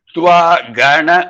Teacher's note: Twa Gana, again Ga is going down. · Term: Anudattam